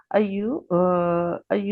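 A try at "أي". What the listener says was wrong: अयू नहीं है, ऐ, ऐ।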